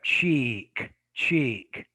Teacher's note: It's a tense vowel. It's longer. The tongue is harder. I think it's higher in the mouth when you say the sound.